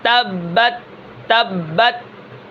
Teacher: زبان کہاں لگ رہی ہے؟ ثنایا علیہ کی جڑوں میں